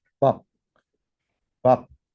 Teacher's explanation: 처음 발음할 때 비읍 발음하잖아요. 이게 입술이 터지는 소리예요. 파열음이죠.